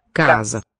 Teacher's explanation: Spelled just like a Spanish word, but this one is, this S is a Z voiced here.